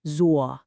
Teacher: Zuo is a third tone. And remember, this is not a flat sound. It has a very distinct contour. It falls and then it rises.